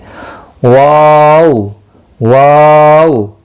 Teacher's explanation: होंठ गोलाई इख्तियार करते हैं जिस वक़्त इसकी अदायगी होती है